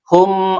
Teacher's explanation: Karena ada mim sukun bertemu dengan huruf izhar syafawi yaitu ain. Dibaca izhar ya jelas mimnya tidak boleh memantul dan tidak boleh ditahan.